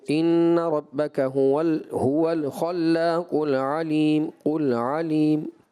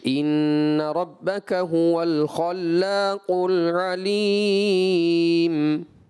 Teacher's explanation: آپ نے اس لام ساکن کو ہلا دیا یعنی کہ قلقلہ کر دیا